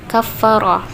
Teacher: huruf ra dibaca tafkhim atau tebal, ra, sebab berharakat fathah